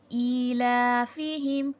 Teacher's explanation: حمزہ کھڑی زیر ای، لام کھڑا زبر لا، دونوں کو کھینچ کے پڑھیں گے